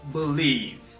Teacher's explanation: when you speak very fast, you just say believe. You make a schwa sound